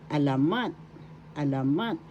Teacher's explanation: Third example of panitican panitican literature in English is alamat excuse me please alamat first syllable a second syllable la third syllable mat the accent is in the third syllable